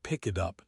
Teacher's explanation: Pick it up becomes pyoop. The k moves over. The t moves over. It sounds like one strange word. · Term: the linker